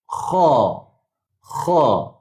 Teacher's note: Bulatkan mulut. Kha bunyi kha tu dia jadi bulat sebab dia KH. Dia bulat tapi jangan muncung.